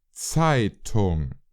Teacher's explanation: That first letter looks like the English Z, but listen to the pronunciation again. Zeitung. It's like the English TS, as in what's up.